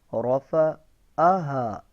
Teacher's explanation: را کے اوپر زبر ہے تو را کو موٹا پڑھیں گے